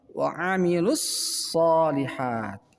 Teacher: Di sini ada alif lam bertemu dengan shad, dinamakan alif lam samsiah, maka membaca lu langsung masuk ke dalam huruf shad